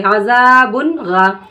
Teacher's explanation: نون کی آواز کو ہم ناک میں روکیں گے نہیں، ظاہر کر کے جلدی پڑھیں گے